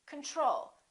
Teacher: second syllable is stressed the first oh is reduced